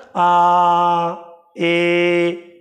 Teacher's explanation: दीर्घ में जिनमें ह्रस्व से दुगना समय लगे